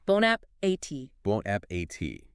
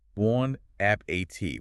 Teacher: Notice that there is a letter T at the very end of the word, but we do not say it. The T is completely silent.